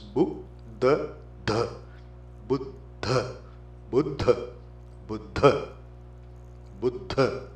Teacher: the second DH is duh the aspirate